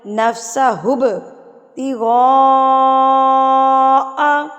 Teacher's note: اس مد کے بعد یہ والا حمزہ آپ کو دکھے گا تو اس کا مطلب ہے یہ مد متصل یعنی کہ بڑی مد ہے. اس کو آپ نے 4 حرکات کے برابر کھینچ کے پڑھنا ہے